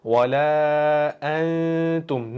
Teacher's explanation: Bu yerda sukunli nunimiz kelyapti. Bu yerda nun harfimizni ta harfimizni ichiga kirgizamiz. Ta harfimizni ichiga yashirib o'qiymiz va g'unna bilan.